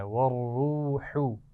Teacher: را موٹی پڑھی جائے گی اور ہا کا مخرج واضح رکھنا ہے